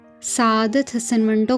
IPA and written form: səˈaːd̪ət̪ ˈɦəsən ˈməɳʈoː (سعادت حسن منٹو)